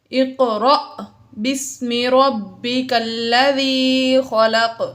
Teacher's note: اقرأ میں قاف حروف قلقلہ میں سے ساکن ہے، اس میں ہم نے قلقلہ ظاہر کیا اور حمزہ الف کے اوپر جزم آ گئی تو یہ حمزہ ہوا اور حمزہ ساکن ہے، الف کے اوپر جزم ہے لہٰذا حمزہ ساکن ہے اور حمزہ ساکنہ کو ہمیشہ جھٹکا دے کر پڑھتے ہیں